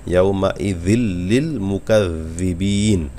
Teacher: লাম হলো ইদগামে বেলাগুন্নার 2টি অক্ষরের একটি অক্ষর, এখানে গুন্না ছাড়া মিলায় পড়তে হবে।